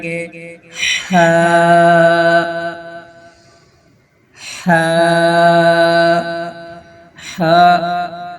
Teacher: حلق کے درمیانی حصہ سے ادا ہوتا ہے